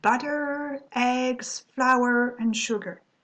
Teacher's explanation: between all the elements here your voice is rising because you're you're making this list